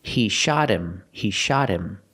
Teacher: what about the H in him that's not a vowel but because the word him is not a stressed word the H becomes silent · The T in shot is between vowels, so it changes to a fast D.